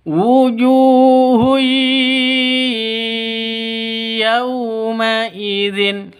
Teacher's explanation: Cara membacanya adalah dengan memasukkan ya disertai dengan gumaman. · Tanwin bertemu dengan ya, cara bacanya masuk ke ya disertai dengung. Karena idgham bigunnah. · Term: idgham bighunnah